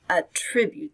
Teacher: Here the stress is on the second syllable, attribute.